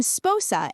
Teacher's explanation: The nasal softened and replaced with a long vowel.